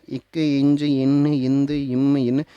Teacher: அடுத்தது மெல்லின மெய் எழுத்துக்கள் பிறக்கக்கூடிய பகுதி மூக்கு பகுதி.